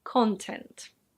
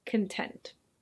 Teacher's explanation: same spelling and that's pronounced CONtent, but this adjective is pronounced conTENT